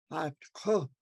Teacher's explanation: The underline K is in your throat. So if you say to yourself that regular K, ku, then move it back in the back of your throat.